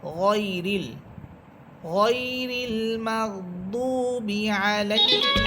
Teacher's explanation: যেমন আমরা সূরা ফাতিহার মধ্যে পড়ে থাকি গয়রিল মাগদুবি আলাইহিম, এখানে দেখেন গয়রিল, আমরা গাইরিল বলি না, গাইরিল বললে এটা ভুল হবে, বরং এখানে পড়তে হবে গয়রিল, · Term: মোটা হরফ